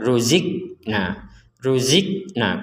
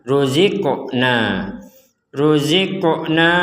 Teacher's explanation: baca dipantulkan atau dimentalkan jadi tidak sekedar ruzik nah ruzik nah kurang itu kurang harus ada pentalan ruziqna ruziqnaq